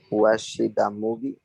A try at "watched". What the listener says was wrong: Try to avoid saying the watch it, play it, work it. Watched. Slow. Watched. CH, watched.